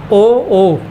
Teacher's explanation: कंठोष् कंठ और ओ हो होठ कंठ और होठ दोनों से बोले जाएंगे